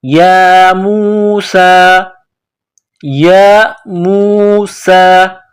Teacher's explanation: یا کے اوپر کڑا زبر ہے، سین کے اوپر کڑا زبر ہے، ایک الف کے برابر کھینچنا ہے اس کو